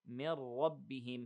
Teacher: here we have إدغام but without غنة, without any seconds